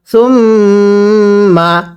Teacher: মিমে তাজদিদ গুন্নাহ করা ওয়াজিব।